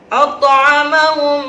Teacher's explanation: Disebut hukum tajwidnya adalah idgham mimi karena mim sukun bertemu dengan huruf mim. Maka bacaannya adalah ditahan 2-3 harokat seperti gunnah.